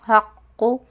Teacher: اس کی آواز قاف کی آواز موٹی ہوتی ہے، بہت موٹی آواز ہے یہ